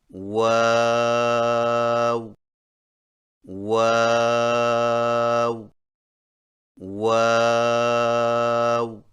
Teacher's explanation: واؤ کی ادائیگی میں ہونٹوں کو گول کرتے ہوئے اوپر کی جانب کھول کر درمیانی سی مد کریں اور پھر سے ہونٹوں کو چونچ کی مانند گول کرتے ہوئے باریک آواز میں پڑھیں، یعنی واو واو واو۔